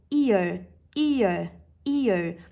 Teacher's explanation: các bạn đọc e sau đó đọc dài và nối vào nhau nhá · hai âm nguyên âm đơn tạo thành đó là âm e và âm Ờ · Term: nguyên âm đôi